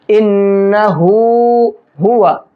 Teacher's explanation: ہا کے اوپر الٹا پیش ہے, ایک الف کی برابر کھینچیں گے